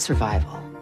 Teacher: in this case the accent is in the second syllable corresponding to Vai